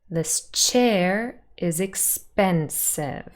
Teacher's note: here we have stress on the second syllable and the fifth